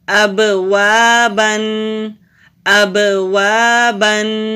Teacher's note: با ساکن ہے، جب با ساکن ہوتا ہے تو وہاں ہم کلکلا کرتے ہیں۔